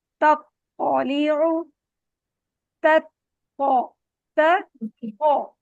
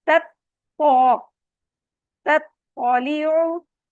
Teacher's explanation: ता और पौ दोनों का सेम मखरज है, लेकिन पहला वाला लाइट है, दूसरा हैवी है।